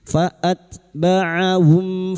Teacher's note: Ha sukun bahro faatbaahum faat huruf ta sukun ya ketika sukun maka tampakkan sifat hamesnya fabaahum mim sukun bertemu fa izhar syafawi mim sukun dibaca jelas tanpa mendengung